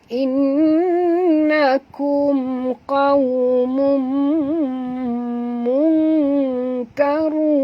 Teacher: tanwin baris dua depan bertemu dengan mim, maka kita kena masuk dan dengung. Idgham al-gunah.